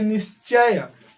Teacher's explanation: विसर्ग के बाद च या छ आए तो उसका तालव्य स, तालाबी स, ये होता है ना, तालु से बोलने वाला, ये स बड़ा वाला, ये हो जाता है।